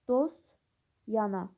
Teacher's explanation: Birincidə sözlərdən birində səs düşümü müşahidə edilir. Dostana sözündə bəli t samiti tələffüzdə düşür.